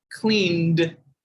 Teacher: cleaned like i said as a d sound at the end